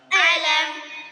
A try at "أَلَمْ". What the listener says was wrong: প্রথম আলাম না আ বলেন আ